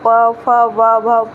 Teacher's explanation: जब भी बोलेंगे आप प, फ, ब, भ, पूरा ये आपका ओठ दोनों ऐसे टच करेगा, और ऐसे ओठ को पकड़ के आप बोल ही नहीं सकते कि दोनों टच ना करें, तो ऐसा नहीं होगा। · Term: प वर्ग